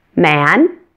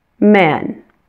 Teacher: for the short e my jaw drops less than it does for the short eh ah ah now let's